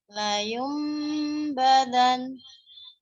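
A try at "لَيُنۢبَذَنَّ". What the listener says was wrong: Oke, udah betul.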